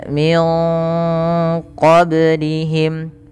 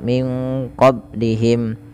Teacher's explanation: pada lafal ba yang sukun ini ada hukum tajwid berupa namanya Qalqalah yaitu artinya memantul